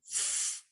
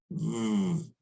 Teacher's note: frication in this case happens when the air passes through the narrow gap between the bottom lip and teeth. So this is the labiodental fricative.